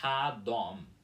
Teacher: Primeiro a garganta forçada e depois aspiração.